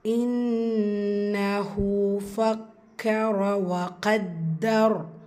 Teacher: இன்னஹு நூன் முஷத்தா குன்னா செய்யணும். ஹூவில் உல்டாதோமா 2 ஹரக்கத்தில் நீட்டம் கொடுங்க.